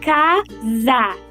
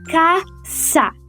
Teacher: Um exemplo que podemos dar é da palavra casa, que em português pronunciamos como uma fricativa sonora, casa. Entretanto, no espanhol se pronuncia caça, como uma fricativa surda, caça. Essa diferença não é notada pelos hispanofalantes em primeiro momento, o que resulta numa futura dificuldade de pronúncia.